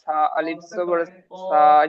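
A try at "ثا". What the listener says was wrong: এই সাটা শিখে নেন, যে সা সা বলছেন না, সাটা একটা শিখে নেন। দেখেন, সিন, চিন, দুটো আলাদা। যেটা বলছেন সা সা বলছেন, সেটা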